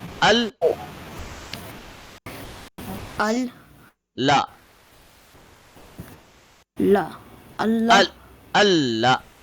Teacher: we are pressing the lam for 1 second because of the shadda.